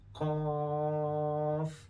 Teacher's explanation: Qaf is back of your tongue and last part of your palate. When back of your tongue, you can say root of the tongue.